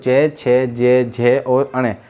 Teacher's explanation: यदि हम तालु का उच्चारण करते हैं तो चे, छे, जे, झे और अणे, हमारी जो वायु घर्षण करती है, कंपन होती है, वो तालु पर होती है।